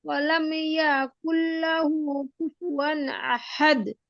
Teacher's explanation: এই যে ইয়াটা একটু দীর্ঘ হয়ে যাচ্ছে, টান মতো শোনা যাচ্ছে আর কি।